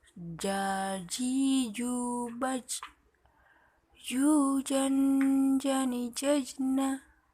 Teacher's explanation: Melafalkan huruf ja dengan menyentuh tengah lidah ke daerah langit-langit.